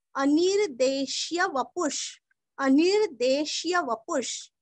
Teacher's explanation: वपु का पूरस्व और विसर्ग का आधा श